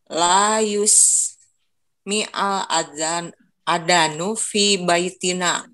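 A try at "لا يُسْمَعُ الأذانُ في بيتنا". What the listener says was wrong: Ah, ini harusnya dibacanya la yusma'u. Kalau fi'il mudhari itu awalnya sama ya di dhamma, tapi sebelum harokat akhirnya di fathah. Jadi la yusma'u al adanu fi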